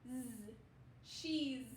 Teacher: This S is going to say like its hard buzzing sound